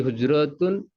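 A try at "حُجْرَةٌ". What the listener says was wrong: হুজরাতুন না, হুজরাতুন, টান নেই, হ্যাঁ।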